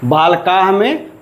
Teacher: पहले आ का उच्चारण करेंगे उसके पश्चात विसर्ग का उच्चारण करेंगे